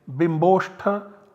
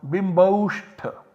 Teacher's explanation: in place of bimba plus oshtha, a plus o, we substitute the latter sound, namely the o. So we have the output bimb, o and shtha.